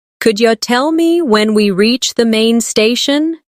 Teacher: Could you tell me when we reach the main station? Notice how could you becomes could ya.